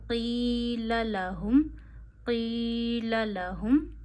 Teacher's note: यह जो हा है यह गले के आखिर से भारी अदा होता है। · یہ جو ہا ہے یہ گلے کے آخر سے بھاری ادا ہوتا ہے